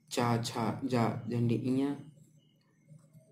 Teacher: इनको उच्चारित करते समय जीभ के पिछले हिस्से से हवा निकलती है। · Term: तालब